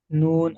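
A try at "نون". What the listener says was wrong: নুন অক্ষরটি টান হয় না জি, তিন আলিফ টান দিয়ে বলতে হবে।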